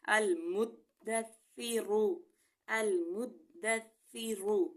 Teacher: لیکن ثا میں جو ہے نرمی کا خیال رکھیں گے. اس کا مخرج ہے کہ ہماری زبان کی نوک اوپر والے دانتوں کے سروں سے لگتی ہے تو ثا ادا ہوتا ہے